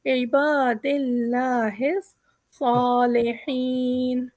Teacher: यहाँ पर लफ्ज़ अल्लाह बारीक है